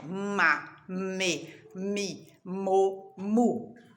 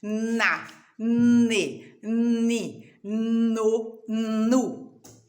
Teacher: M, né, que você já aprendeu, encosta os lábios e até treme um pouquinho os lábios